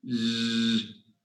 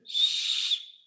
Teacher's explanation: You can hear the vibration in z, but not in s.